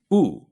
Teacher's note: and in the front of your mouth e and for ooh the tongue is all the way up but in the back of your mouth ooh so if you gradually slip from E to o e · for U, the tongue is all the way up but in the back of your mouth